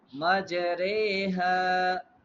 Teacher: To incline the sound of fatha, zabar toward kasra, zir, and the sound of alif toward the ya is called imala. Ra, the ra of imala is pronounced re instead of v, so it's become majreha.